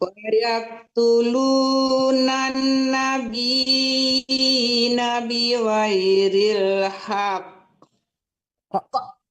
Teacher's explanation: ada pantulan qafnya karena qaf itu huruf qalaqalah apabila kita berwakaf ya, walaupun dia tidak mati karena kita berwakaf jadinya kan mati, jadi tetap dipantulkan.